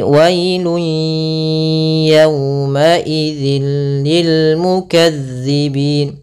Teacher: Apa yang kita masukkan adalah suara tanwinnya atau suara nunnya ke huruf ya, maka hilang bunyinya, tapi dia masih menyisakan suara bunyi dengan gunnahnya. Wailun ya, bukan wailun ya, tapi wailun yawma idzil lil mukazzibin. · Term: idgham bi gunnah